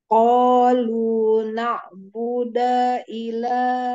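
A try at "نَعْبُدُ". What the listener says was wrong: Nak budu, bukan Buddha, budu. Jangan dipanjangkan huruf dalnya. Nak budu, tapi pendek.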